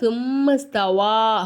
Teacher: இந்த மீம் நம்ம அஞ்சு அலிஃப்க்கு நீட்டணும் இங்க பாருங்க சும்மஸ்தவா அப்படிங்கும் போது இந்த இடத்துல ஒரு வளைவு மாதிரி கொடுத்திருக்காங்களா